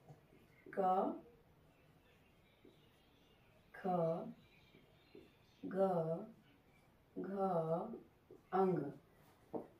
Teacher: ये सभी वर्ड कंठ से बोले जाते हैं।